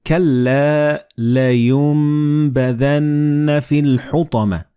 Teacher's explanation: And this meme appears in the middle of the word. So the noon and ba, when they follow one another in the same word, you don't pronounce noon, but you pronounce meme. Like in this example, you read كَلَّا لَيُنْبَذَنَّ فِي الْحُطَمَةِ.